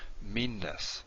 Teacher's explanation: You hold this longer. You don't say it twice, but you hold it longer.